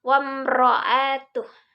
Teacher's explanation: Ro tafhim ini artinya adalah tebal, sehingga ro-nya dibaca tebal